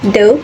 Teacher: Te is voiceless and de is voiced. They are alveolar plosives made with the tongue touching the alveolar ridge.